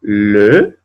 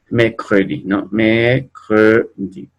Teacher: La boca la ponen como una O, pero dicen E